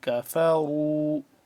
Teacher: کاف باریک پڑھیں گے، را موٹا پڑھیں گے